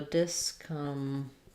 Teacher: We stress on the bob syllable here.